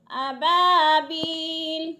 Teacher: ابابیل، بی پہ یا مدہ، یا ساکن سے پہلے با کے نیچے زیر ہے تو یا مدہ کو ایک الف کے برابر کھینچ کر پڑھنا ہے